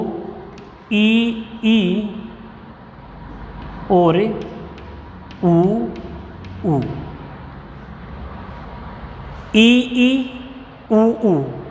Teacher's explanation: ऐसे स्वर जिनके उच्चारण में मुख न के बराबर खुलता है। ऐसे स्वर जिनके उच्चारण में मुख न के बराबर खुलता है, यानी बिल्कुल थोड़ा खुलता है, वो समृद्ध स्वर होंगे।